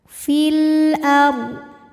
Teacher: izhar iidhar qamari fil ARD huruf ro dibunyikan secara tafkhim sebab ra sukun didahului baris fathah maka huruf rnya dibunyikan dengan tebal · lam sukun dibunyikan dengan jelas atau biasa disebut dengan izhar